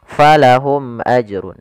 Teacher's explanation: mim mati bertemu dengan hamzah. Maka dia mimnya dibaca jelas. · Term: idhar syafawi